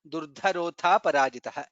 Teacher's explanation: Durdhara, dha is Mahaprana, atha parajitah, tha is Mahaprana